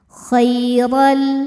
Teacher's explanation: tanwin tidak dibaca n lagi melainkan langsung baca lam lebur tapi tidak ditahan tidak dengung · dibaca secara tafkhim karena berharakat fathah tanwin maka rnya tebal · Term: idgam Bil gunah